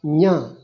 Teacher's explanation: It's not nga, it is nya. Nya. Nasalized ja.